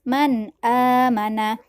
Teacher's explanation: Nah, di situ terdapat nun mati atau nun sukun yang bertemu dengan hamzah. Maka dia dibaca izhar. Cara bacanya harus jelas, tidak boleh berdengung. Jangan dibaca man amana.